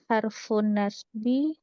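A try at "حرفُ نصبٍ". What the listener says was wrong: Aha, nasbin ditanwinkan mbaknya.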